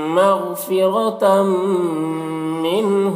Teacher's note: مغفرۃ، یہاں پر دیکھیے تنوین کے بعد میم ہے، تنوین کے بعد حروف ادغام میں سے میم ہے تو تنوین کو میم سے ملا کر غنہ کے ساتھ پڑھیں گے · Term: ادغام ناقص